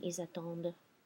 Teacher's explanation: And then the last one, ils attendent. And I'm pronouncing my D because of my fake O muet here in the third person plural ending